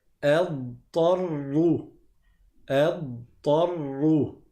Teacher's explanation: le dad n'a pas de qalqala. Donc, ça va faire deux lettres qui vont vraiment se coller et se succéder.